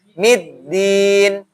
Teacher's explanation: Ujung lidah bertemu dengan gusi, tempat tumbuhnya gigi atas. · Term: Huruf dal